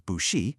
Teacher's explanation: It smoothly alters that first bu into a rising second tone. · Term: tone sandhi